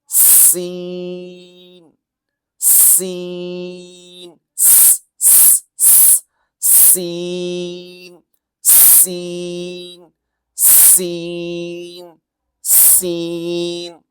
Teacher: सीन में एक किस्म की सीटी जैसे होती है